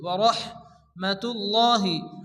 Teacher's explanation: বা ইয়াজের বি, ইয়া পেশ ইউ, নবী ইউ, নবী ইউ আইয়ুহান নবী ইউ, আইয়ুহান নবী ইউ ওয়া রাহমাতুল্লাহি, এখানে র হা জবর রহ, বড় হা মুখ দিয়ে বাতাস বের করে উচ্চারণ করে পড়তে হবে